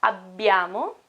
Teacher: we have BB okay it's a stronger longer sound